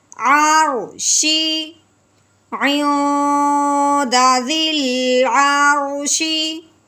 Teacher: ہاں جی یہ دیکھیں رو ساکن ہے، رو ساکن سے پہلے زبر آئی، اس لیے اس کو کیا کریں گے پر پڑھیں گے